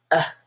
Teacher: schwa is a very relaxed vowel it's kind of like mustard but very quick